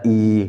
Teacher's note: और जीभ जो है हल्की सी, जीभ का जो पिछला भाग है वो तालु में लग जाता है, ई, है ना। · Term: तालव्य